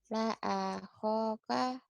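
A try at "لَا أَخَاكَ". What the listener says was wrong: La ahoka, nggak ada yang panjang, Bu.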